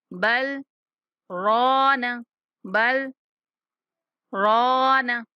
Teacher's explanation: کلا بل، بل کے بعد یہ سکتہ لکھا ہوا ہے، اس کا مطلب ہے کہ یہاں پہ آپ نے سکتے میں آ جانا ہے، یعنی کہ سانس نہیں ٹوٹنے دینا لیکن کچھ دیر سکتہ کرنا ہے